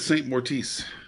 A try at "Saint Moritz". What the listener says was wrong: It's Moritz, not Mortiz.